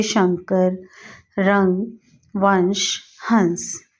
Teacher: अंग जिसके ऊपर एक बिंदी है इसका उच्चारण नासिका से किया जाता है इसे अनुस्वार कहते हैं